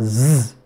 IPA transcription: z